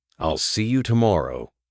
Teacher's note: notice how there's a tiny pause after I'll and see you.